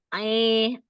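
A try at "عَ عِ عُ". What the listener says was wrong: Itu belum al-jauf itu. Belum keluar. Nah, itu pangkal lidahnya jangan naik. A, jadi kan dia mainnya cuman dari tenggorokan tengah, terus keluarnya kan al-jauf. Al-jauf itu lidahnya jangan ngalingin biar keluarnya tuh apa udaranya tuh keluar gitu. A, a, Umi dengar nggak? a, kayak A kan?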